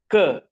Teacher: the obstruction is at the back, at the velum, at the soft palate